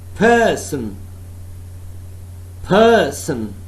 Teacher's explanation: Person, first syllable is stressed, accented one, accented one.